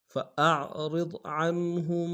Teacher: عنہم میں عن میں اظہار کریں گے، ہم میں میم ساکن میں تھوڑا سا غنہ کریں گے